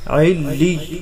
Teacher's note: عین لام زیر عل، لام یا زیر لی، علی، پہلے یا چونکہ مشدد ہے تو اس کو ملاتے ہوئے سختی سے پڑھیں گے، دوسرا یا ساکن ہے تو وہاں پر کھینچ کر پڑھا جائے گا